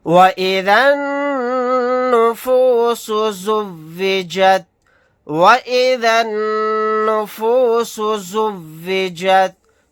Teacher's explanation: یہاں پر نون کے اوپر تشدید ہے، یہاں پر غنہ کر کے پڑھیں گے۔